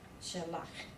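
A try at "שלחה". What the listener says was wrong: It's shalcha. See, it's got the kamatz in there, so you gotta get that ah in there. Shalcha.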